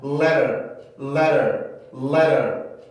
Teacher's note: T나 D 발음이 플랫의 위치에 있을 때 소리를 내려면 치조를 빠르게 치고 내려와야 돼요. 원래 T 발음과 D 발음의 조음의 위치가 치조니까. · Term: 플랫 소리